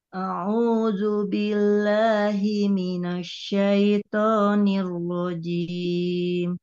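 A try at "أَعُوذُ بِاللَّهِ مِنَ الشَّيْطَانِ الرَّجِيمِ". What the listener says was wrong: Nah, Bu itu huruf shinnya agak monyong. Minasya, bukan minasya, tapi minasya. Coba ulang.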